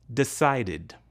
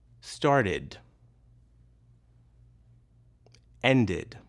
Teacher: In these verbs, the ed ending is pronounced as an extra syllable, id.